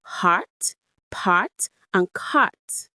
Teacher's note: They all share that long ah vowel sound.